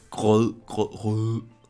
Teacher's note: our R sound is very rough, or whatever you want to call it, especially after G's. It's like grød, grød, rød.